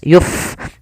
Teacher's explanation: fa yang dia sukun, memiliki sifat hamas, maka dibaca dengan mengalirkan nafas. Yuf, jangan yup dengan pa.